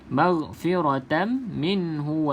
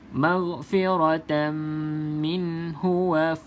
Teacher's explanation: lagi huruf Fa ni hati-hati sebab apa Kalau tak hati-hati sahabat-sahabat mungkin akan tertebalkan huruf Fa sedangkan huruf Fa tak tebal